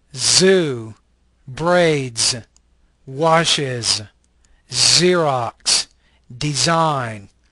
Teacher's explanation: This is an alveolar fricative voice consonant.